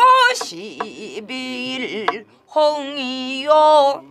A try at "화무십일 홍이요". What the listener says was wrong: 장단이 안 맞으네. 아홉 번째 박 딱 때리고 열 번째에서 홍이요 하고 톡 튀어나오면 돼.